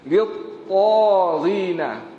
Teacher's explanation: Huruf ta tebal, jangan littazin.